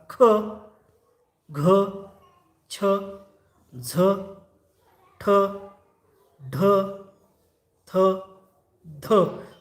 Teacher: ज्या वर्णाचा उच्चार करताना ह ची छटा येते ह असा उच्चार निघतो त्यांना आपण महाप्राण वर्ण असे म्हणतो